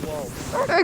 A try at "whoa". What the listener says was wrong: Not as bubbly.